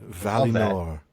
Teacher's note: That second syllable with that I should be an E sound rather than an I sound. Certainly not an uh sound like we do it as Valinor.